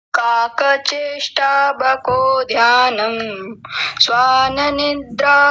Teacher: आपने तालव्य शकार को दंत्य सकार बनाया